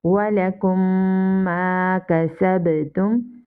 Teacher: After meme sakina here comes another meme, so here is idgham shafwi and here is ba sakina, here is kalkala of sakina. Okay, we will read with echo sound.